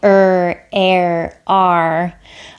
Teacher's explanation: some people curl their tongue backwards when they're saying ER air R